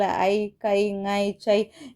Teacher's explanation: தனித்து நம்ம சொல்லும்போது அது தனக்குரிய மாத்திரை என்னது இரண்டு மாத்திரை அளவில் முழுமையாக ஒளிக்கிறது. இதுவே ஒரு சொல்லோட முதல்லயோ இடை இறுதி இந்த மாதிரி இடங்கள்ல வரும்போது தன் மாத்திரை அளவில இருந்து குறைந்து ஒளிக்கிறது. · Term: ஐகாரம்